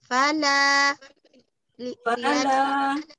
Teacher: lamnya jangan ditebalkan, la jangan tebal, relax lidahnya, lidah relax, lidahnya turunkan, la la relax.